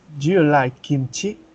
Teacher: WH question the intonation is falling or it goes down while the yes/no question the intonation goes up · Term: rising intonation